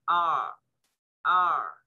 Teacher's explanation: Dan tidak juga seperti R-nya orang Inggris. Lisan Inggris nyebut R itu dia tidak nyentuh makhraj sehingga nggak ada getarnya.